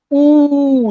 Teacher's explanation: एकदम दोनों ओंठों के बीच में गोला है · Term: व्रतमुखी